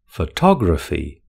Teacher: Photography has four syllables with the stress on the second syllable.